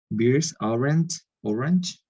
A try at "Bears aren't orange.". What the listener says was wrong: Very good. Be careful. We don't say beers. Beers are cervezas.